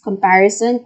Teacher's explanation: The stress is on the third syllable, which is par.